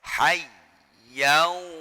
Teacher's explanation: ya-nya tasydid ini bukan dibaca gunnah, tidak pakai dengung, harus jelas hayyau, baru kemudian wawu setelahnya itu dibaca gunnah, dibaca idgham bi gunnah ya.